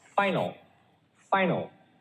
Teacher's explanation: the first syllable stress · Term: primary stress